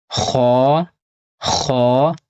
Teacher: اس کو موٹا کر کے پڑھنا ہے اور کھا نہیں پڑھنا ہے